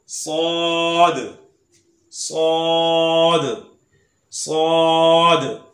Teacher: ये ज़बान की नोक और दोनों दांतों के अंदरूनी किनारे से अदा होता है। सौद। इसे कहते हैं हरफे सफीरिया, यानी जब इसे अदा करते हैं तो सीटी की तरह आवाज आती है। · इसे हरफे सफीरिया भी कहते हैं यानी सीटी वाला हरूफ।